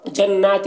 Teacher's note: جنات نون میں غنہ ہوگا اور کھینچیں گے، کھڑا زبر ہے